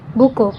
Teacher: Tekanan penekanan pada suku kata tertentu. Contohnya seperti buku. Penekanan ada di awal.